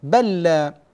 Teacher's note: تصير اللام الاولى مع اللام الثانيه تصير حرفا واحدا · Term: ادغام